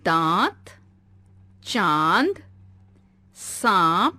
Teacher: इसका उच्चारण नाक और मुंह से किया जाता है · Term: अनुनासिक